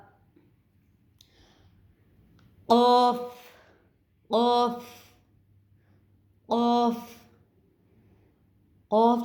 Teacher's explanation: زبان کی جڑ اور تالو کا جو نرم حصہ ہے اس سے قاف کی ادائیگی ہوگی